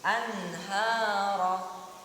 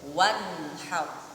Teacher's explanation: Misalkan sini, ini nun sukun, yang ini nun sukun bertemu dengan huruf ha, maka nun sukun ini tidak boleh didengungkan ataupun tidak boleh ditekan gitu, harus jelas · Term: dibaca jelas